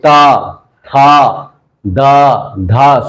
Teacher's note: सबको दांत में जीभ मारना पड़ता है तब इसका उच्चारण होता है